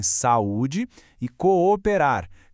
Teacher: Cada vogal ali é forte o suficiente para ser a dona da sua própria sílaba. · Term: iato